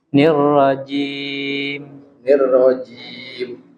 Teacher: ingat ya huruf jim jangan mendesis